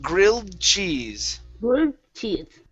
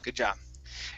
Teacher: we're going to use a stop D there. So we don't want to finish the D sound.